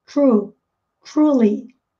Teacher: Treinem, porque tem esse R retroflexo.